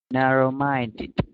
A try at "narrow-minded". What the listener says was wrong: Don't forget that last part, ED sounds.